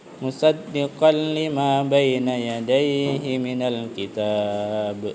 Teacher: Tanwin bertemu dengan huruf lam, maka itu akan dapat hukum bacaan namanya idgham bila gunnah ya, tanpa dengun ya